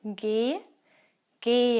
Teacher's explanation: the H itself is not pronounced it just makes the vowel sound a bit longer